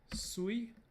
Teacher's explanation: with high tone at the start and high tone at the end